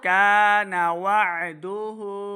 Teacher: आइन के ऊपर हमज़ा की आवाज़ नहीं आनी चाहिए, आइन को सही क्लियर तलफ़्फ़ुज़ के साथ पढ़ें। हा के ऊपर उल्टा पेश दो हरका लम्बा करना है, हा का मखरज हलक के निचले वाले हिस्से से इसको अदा करें।